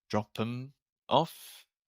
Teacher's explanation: then the th disappears drop them off